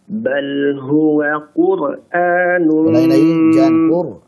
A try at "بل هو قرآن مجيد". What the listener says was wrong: jangan diputus. Bal huwa jangan diputus.